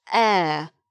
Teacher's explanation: It has an H at the beginning, but the H is not sounded.